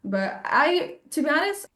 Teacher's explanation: Nice dropping of the T, but I, glottal stop.